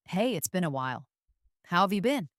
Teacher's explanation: have you often sounds like have ya in fast speech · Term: connected version